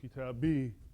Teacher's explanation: So it's not kitabu-i, but kita-bi, meaning the kasra is on the ba, and the e of first person, mine, is just added on to that, right? And it just carries a long vowel sound, right? So kitabi, my book.